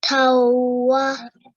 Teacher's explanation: this fathatain here should be merged with waw mushaddad, and a nasal sound should be produced for 2 seconds. So it's not going to be tanwa, it should be tawa.